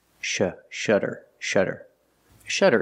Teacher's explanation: it has a Double T but it makes the same sound the fast D sound